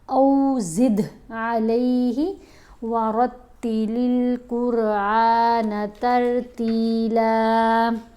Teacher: اب یہاں دال کے اوپر ہم نے کلکلا کرنا ہے، دال کی آواز کو ہلا کر پڑھا جائے گا ، الف کے اوپر زبر ہے، ساتھ واؤ ساکن ہے تو